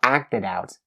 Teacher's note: acted, it ends with the final D sound, and you link the D sound to out. You have acted out.